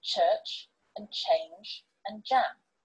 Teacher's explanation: These are the palato-alveolar affricates and are sounded by placing the blade or tip of the tongue behind the alveolar ridge.